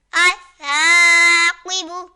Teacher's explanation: یہاں قاف حروف مستعلیہ میں سے تو اسے پر یعنی موٹا پڑھیں گے